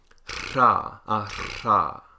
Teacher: They have the unvoiced alveolar trill · The tongue will vibrate against the alveolar ridge, and you'll get sort of this repeated plosive sound.